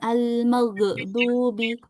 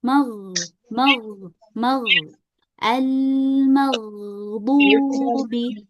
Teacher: Jadi kita alirin aja huruf gainnya biar enggak mantul.